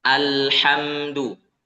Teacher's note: Kita tunaikan huruf lam itu kita baca dengan tawassut, pertengahan ya, antara syiddah dan rakhawah.